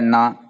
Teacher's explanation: அதோட அன்னத்தை தட்டக்கூடாது பல்லுல டச் பண்ணனும் பல்லோட அடிப்பகுதியை நுனி பகுதியை டச் பண்ணும்போது உங்களுக்கு இந்த நா பிறக்குது